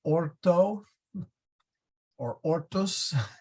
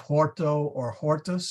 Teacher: what he's doing is he's dropping the H which was common in certain regions